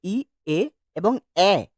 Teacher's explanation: যে সকল মৌলিক স্বরধ্বনি উচ্চারণ করার সময় জীবটা মুখগহরের সামনে চলে আসে সেগুলোকে বলা হয় সম্মুখ স্বরধ্বনি